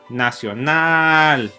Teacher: nada si edita la palabra nacional notarás una vez más que la última sílaba final lleva la mayor fuerza y como resultado es la sílaba tónica